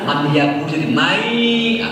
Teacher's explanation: Nun mati ketemu ya, man yaku jadi mai, gulung lah